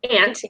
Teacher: there's some nasalization going on there